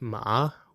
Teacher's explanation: a more complex one like ma, which dips then rises